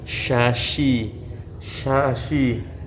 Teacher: Nah, attafasiyi ini adalah menyebarnya angin di mulut ketika pengucapan huruf syin.